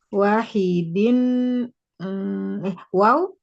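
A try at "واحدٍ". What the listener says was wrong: Enggak, ini enggak ada waw. Wahidin satu.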